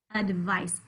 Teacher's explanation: you can hear that schwa in the beginning in the first syllable